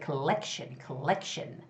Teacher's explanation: collection is the second syllable stress